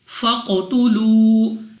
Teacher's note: قاف ہمارے پاس ایک تو مستعلیہ میں سے ہے, موٹا پڑھیں گے منہ اور آواز کو کھول کر, اور دوسرا ہمارے پاس قلقلہ میں سے ہے, تو جب ہم ادا کریں گے ہماری آواز ہمیں واپس لوٹتی ہوئی سنائی دے گی.